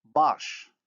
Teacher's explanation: The vowel a in baş is plus back, minus round.